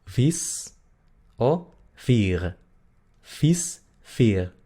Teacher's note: La combinación I-E se pronuncia exactamente igual a la I del español, pero es larga.